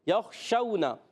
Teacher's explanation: شین کا مخرج ہے زبان کا درمیان، اوپر تالو کے درمیان سے شین ادا ہوتا ہے، اور اس میں ایک صفت تفشی بھی پائی جاتی ہے۔